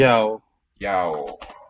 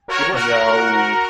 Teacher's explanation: 2 syllables, I believe, not a diphthong.